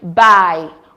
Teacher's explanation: single syllable gliding motion is another characteristic feature of De tongues the tongue and mouth moves smoothly from the first vowel position to the second